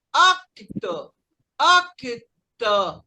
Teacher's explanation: o O aqui, no caso, é quase um A, parecido com um A.